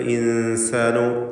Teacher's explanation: അൽ ഇൻസാനു സാക്കിനത്തായ നൂനിനെ മണിക്കുക. ഇഖ്ഫാ ഹഖീഖി.